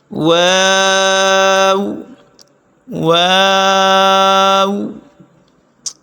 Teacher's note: میم دونوں ہونٹوں کی خشکی والے حصے سے ادا ہوتا ہے میم، میم۔ واو دونوں ہونٹوں کے ناتمام گول ہونے سے ادا ہوتا ہے